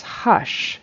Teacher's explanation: he said it as an sh with a sh sh so he says hush instead of huge